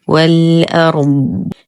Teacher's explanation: ننتقل من فتحة الواو إلى إسكان اللام القمرية، همزة الوصل تسقط في درج الكلام. الراء مفخمة فهي ساكنة وما قبلها مفتوح. نقف على الضاد بالاستطالة والتفخيم والإطباق فنقول والأرض.